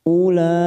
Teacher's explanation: Ada mat yang bertemu dengan hamzah dalam satu kalimat, namanya bacaan mat wajib mutasil, 4 harokat kita panjangkan.